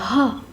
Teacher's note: कंठ, महाप्राण, घोष व्यंजन वर्ण का उदाहरण है ह